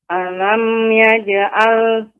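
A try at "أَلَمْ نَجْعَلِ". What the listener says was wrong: Ya, di sini ada nun, Ibu, bukan ya. Alam naj'a.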